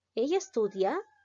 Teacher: Si yo digo, ella estudia, está descendiendo. Y en una pregunta va a llegar a ascender.